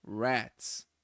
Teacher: Então é aquele R do caipira, rats. É o som do R retroflexo. Não é o som do R tipo de rato.